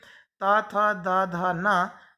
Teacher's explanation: इनको बोलते समय हमारी जीभ दांत को टच करती है। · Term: दंत वर्ण